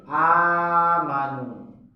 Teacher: Nah, karena susah untuk disebut, lisanul Arab itu susah disebut amanu, sehingga digantilah hamzah yang kedua yang sukun itu dengan panjang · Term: mad badal